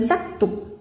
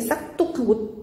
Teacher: 우리가 싹둑이라고 할 때 자연스럽게 싹둑하고 쌍디귿으로 소리가 나죠? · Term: 된소리